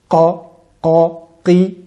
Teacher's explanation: le fond de la langue qui s'élève et se colle pour la lettre qaf au palais mou, qa, qa, qi, et pour la lettre kef, c'est le fond de la langue qui se colle à cheval, si l'on veut, entre le palais mou et le palais dur, le palais osseux.